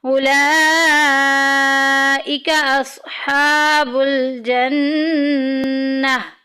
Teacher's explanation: جدھر جدھر بھی نون کے اوپر شد آئے گی ہم غنہ کریں گے، ناک میں آواز لے کے جائیں گے۔